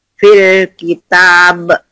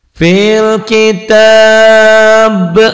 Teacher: Jadi mad arid disukun tuh jadi panjang dan qalqalah kubro ya kalau dihentikan.